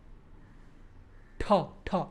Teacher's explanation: Now your retroflex, more like on the palate, back of your palate. Not very back, but ta.